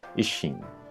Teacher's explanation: This is another case with the doubled up consonants, so the sound bleeds into itself.